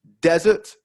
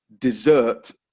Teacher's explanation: desert first syllable dessert second syllable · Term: stress